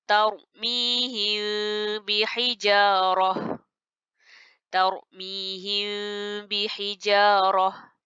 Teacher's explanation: menyembunyikan bunyi mim serentak dengung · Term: Ikhfa Syafawi